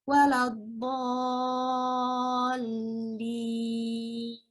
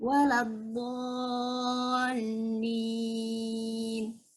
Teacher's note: Dibaca sepanjang 6 harokat atau 3 kali mad tabi'i. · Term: mad lazim mutsaqal kilmi